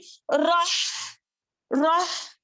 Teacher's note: हम्स का letter है ये हा। हम जरिया नफ्स यानी कि हमारी सांस जो है जारी होती रहती है।